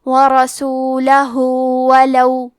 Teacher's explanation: کلمت ورسولہ میں حرف را پہ زبر ہے تو ہم حرف را کو موٹی آواز میں پڑھیں گے. آخری میں ہاں پہ الٹا پیش ہے، یہاں حکم ہے مد صلہ صغرا، یہاں ہم اپنی آواز 2 مد کے برابر لمبی کریں گے.